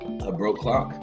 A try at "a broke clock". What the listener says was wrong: I think you said blobe clock, like blow bang. Careful how you say it. Don't say blowcock.